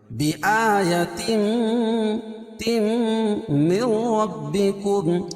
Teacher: تنوین کے بعد ادغام مع غنہ کے 4 حرفوں میں سے میم ہے، تو یہاں غنہ کر کے پڑھیں گے